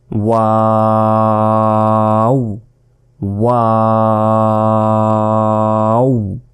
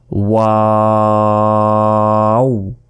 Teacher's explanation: দুই ঠোঁটের শূন্যময় স্থান থেকে এই ওয়া অক্ষরটি উচ্চারিত হয়